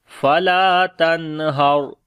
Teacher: نون ساکن کے بعد حروف حلقی میں سے ہا آ گیا، اس وجہ سے نون کی آواز کو ظاہر کر کے پڑھیں گے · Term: اظہار